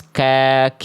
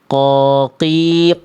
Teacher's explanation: Kalau qof, pangkal lidahnya nempelnya ke bagian langit-langit lunak saja.